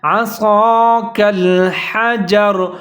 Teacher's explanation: صاد کو موٹا کر کے پڑھنا ہے